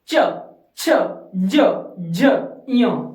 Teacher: ऊपरी दांत से थोड़ा अंदर जीभ का अगला हिस्सा। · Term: च वर्ग